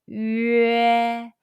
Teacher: your lips are from round to spread